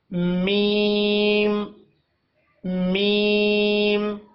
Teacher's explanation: اگلا حرف ہے ہمارے پاس میم. میم کے لیے اپنے ہونٹوں کے خشک حصے کو آپس میں ملا کر نرمی کے ساتھ میم ادا کرنا ہے. میم خشک، میم میم.